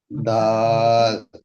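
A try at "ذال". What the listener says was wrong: দাল নয়, দাল নয়, দাল নয়, দালের পরে কি এটা? জাল, একটু গুলিয়ে নেন।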